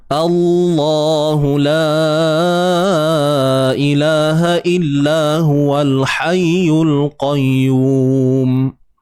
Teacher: Tapi bila sebut Allah, pangkal lidah kita naik. Dia akan jadi macam ni ya, melengkung. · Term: taghliz kalimah Allah